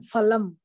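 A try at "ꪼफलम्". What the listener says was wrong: Not phalam, we say there is no pha. Phalam, pikaf phalam. The ardha visarga is upadmaniya. Ucharana sthanam is oshtau, lips.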